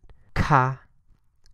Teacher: KH is aspirated. Ka, kind of like the word kite.